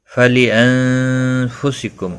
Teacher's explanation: نون ساکن کے بعد حروف اخفا کفا آیا، اخفا حقیقی ہوگا